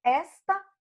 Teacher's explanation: O esta é uma paroxítona, é a penúltima que é forte, não tem acento.